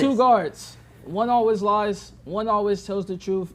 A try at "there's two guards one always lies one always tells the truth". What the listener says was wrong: bigger voice bigger voice boy okay you got to hear you right now you sound like this all right it's very low it's very low and like weak